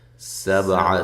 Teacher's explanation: سین کو باریک سیٹی کے ساتھ، با قلقلہ، عین کو واضح نکالنا ہے